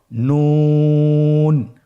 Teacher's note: নুন হরফটি উচ্চারণের ক্ষেত্রে অবশ্যই পাতলা করে উচ্চারণ করতে হবে এবং 3 আলিফ টেনে পড়তে হবে।